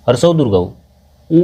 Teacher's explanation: ऊ को हम लोग पढ़ रहे हैं तो ओठ को मोड़ना पड़ रहा है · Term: ओष्ठ